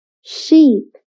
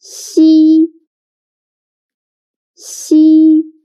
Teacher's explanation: Xi sounds a little bit like the first sound of sheep, but when pronouncing xi, again, your tongue should be more flat, and you need to stretch your mouth to two sides